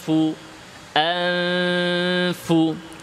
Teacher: নুনটা গোপন হয়ে গেল ফায়ের ভেতর দিয়ে। কিন্তু নুনের নাকের বাঁশির যে অংশটা, গুন্নার যে অংশটা, ওইটা আরও বর্ধিত আকারে বহাল আছে। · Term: ইখফা